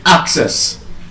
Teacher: That word as a noun and as a verb is stressed on the first syllable.